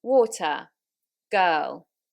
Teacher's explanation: in a modern rp we don't have that rhotic r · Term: not rhotic